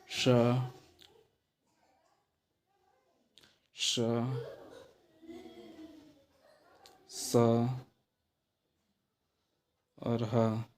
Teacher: जीभ किसी भाग के पास तो चला जाएगा लेकिन टच नहीं करेगा। इनमें निकलने वाली प्राणवायु, जो मुख से निकलने वाली हवा है, वो रगड़ खा खा के निकलती है, यानी गर्म होकर निकलती है। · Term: ऊष्म व्यंजन